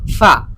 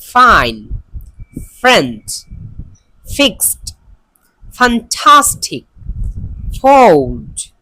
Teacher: এইটা উচ্চারণের সময় আমাদের উপরের দুইটা দাঁত নিচের ঠোঁটের সাথে লেগে উচ্চারণ হবে। আমরা যারা আরবি পড়তে পারি তারা জানি যে আরবিতে ফা যে হরফটা আছে এটা উচ্চারণের সময় আমাদের উপরের দুইটা দাঁত নিচের ঠোঁটের সাথে লাগিয়ে উচ্চারণ করি, ফা। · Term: ফা সাউন্ড